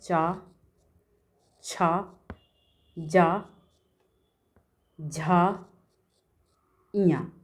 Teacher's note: इन सभी का उच्चारण तालू से होता है